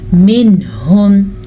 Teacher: یہاں پہ نون کو ظاہر کرنا ہے اور بغیر غنّے کے پڑھنا ہے, بالکل رکے بغیر.